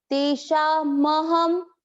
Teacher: म पूरा है, जब अलग बोलेंगे तो शुद्ध उच्चारण आएगा। तेषाम बोलते ही म आधा हो जाता है।